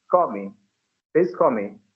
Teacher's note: whenever L letter comes in the end of a word at that time they cannot pronounce it properly instead of speaking L they say w sound they speak wa instead of La so when they have to